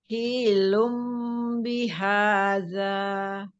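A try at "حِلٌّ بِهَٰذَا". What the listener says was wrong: Nah, hi-nya jangan dipanjangkan, langsung aja. Hilum bihadza.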